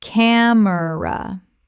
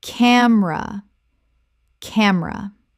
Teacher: Two syllables in natural speech. The middle vowel disappears.